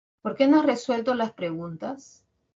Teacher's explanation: todas estas oraciones interrogativas tienen un tono final final descendente